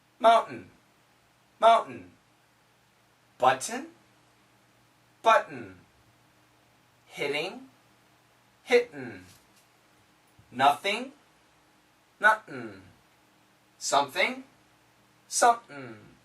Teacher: so mountain with a glottal stop